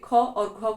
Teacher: जो वर्ण बोलेंगे वो आते हैं महाप्राण में दूसरे और चौथे ख और घ को हम जो है ज्यादा बल लगा के बोलते हैं इसलिए इसको बोला जाता है महाप्राण